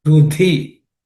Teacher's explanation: this dhi has to be aspirated. Fourth letter in the third class of consonant.